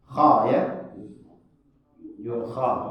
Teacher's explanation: Kha bunyinya o. Ya, karena sifatnya huruf kha itu isti'la.